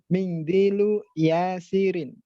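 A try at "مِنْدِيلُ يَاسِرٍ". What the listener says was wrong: Ya, mindilu. Dibacanya nggak perlu pakai ikhfa ya, jadi nggak perlu mingdilu, tapi mindilu saja.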